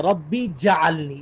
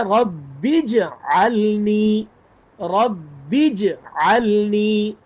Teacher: جیم پر جزم ہے، با کے ساتھ جیم کو ملا کے پڑھنا ہے، جیم پر الگ سے کوئی حرکت نہیں ہے، زبر زیر پیش نہیں ہے۔